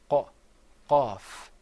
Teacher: you're gonna bring the sound on the soft palate way way way back near your throat